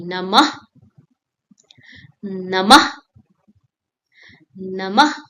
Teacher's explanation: A tiny puff of air at the end of the sound, like sighing softly. Ah, that's called visarg.